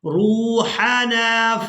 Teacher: را کو واو ساکن کے ساتھ ملاتے ہوئے کھینچ کر ادا کریں گے کیونکہ یہ واو مدہ ہے۔